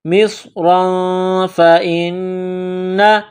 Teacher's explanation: نون مشدد ہے تو آواز ناک میں چھپائیں گے، غنہ کریں گے · تنوین کے بعد فا ہے تو یہاں اخفا کریں گے ، مصرا فإن، نون مشدد ہے تو آواز ناک میں چھپائیں